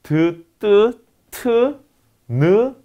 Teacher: 윗 잇몸 부근에서 기류의 협착이나 폐쇄가 일어나는 소리입니다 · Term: 치경음